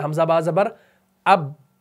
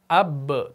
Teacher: सिफत कलकला कब होगी? जब आप तबाउद करेंगे, जब होंठों को आप छोड़ देंगे। तो ये बनेगा अब।